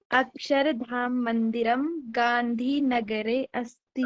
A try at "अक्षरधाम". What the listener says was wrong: धाम मंदिरम नास्ति, धाम घाम नास्ति, धाम।